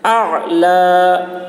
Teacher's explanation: لام میں وقف کر رہے ہیں، لام کی زبر کو کھڑا زبر سے بدل کر پڑھیں گے